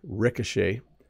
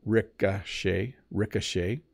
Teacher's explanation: So the O has more of an ah sound, ricochet. And then the CH is making a sh sound, so ricochet.